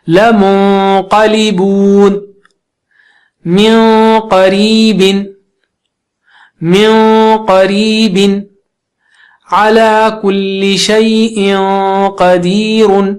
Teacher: رزق کریم. قاف جو اونچا ہے تو نون ساکنہ کا اخفا بھی اونچا ہو جائے گا اور تنوین کا بھی